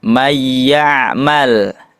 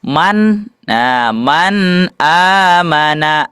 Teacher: Cara membacanya idgham bigunah dimasukkan dan juga digunahkan atau didengungkan.